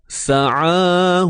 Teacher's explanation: Sa ni tak perlu keluar lidah, tak perlu keluar hujung lidah. Lidah duduk dalam je. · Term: huruf sin